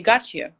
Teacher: When you say gotcha, there is no t anymore. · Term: fusion